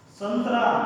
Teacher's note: अनुस्वार का चिन्ह जो है ऐसे, ये मतलब इसका अगर देखा जाए शब्द संतरा, इसका उच्चारण करते समय ध्वनि जो है हमारे नाक से निकलता है, इसलिए इसको ये अनुस्वार कहते हैं।